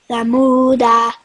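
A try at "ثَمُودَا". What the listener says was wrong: No, da. We are pausing. So the dal with fatha converted into sakoon because we are pausing or taking breath.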